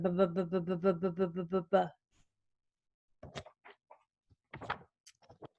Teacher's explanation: So you still put your lips together and air puffs out, but you turn on your voice too. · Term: letter B